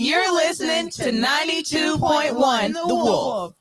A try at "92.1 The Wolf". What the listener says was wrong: You said 92.1 the wolf. There's a comma there. It's an invisible comma.